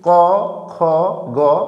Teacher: আমরা যখন উচ্চারণ করি ক, খ, গ, তার মানে হচ্ছে আমাদের এই উচ্চারণগুলো কণ্ঠে উচ্চারণ হয়। ভালো করে খেয়াল করলে বুঝতে পারবা, কণ্ঠে। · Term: কণ্ঠধ্বনি